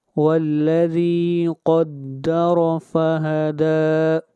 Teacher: دال کو کھینچ کر پڑھیں گے ایک الف کے برابر، یہاں پر مد اصلی ہے۔